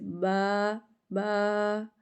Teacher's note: ہونٹوں کے تر حصے سے با ادا ہوگا، ہونٹ بند ہوں گے اور تر حصے سے با با۔